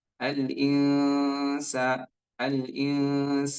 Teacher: itu adalah bacaan Ikhfa ya dan ditahan suaranya dua harakat kurang lebih ya jangan terburu-buru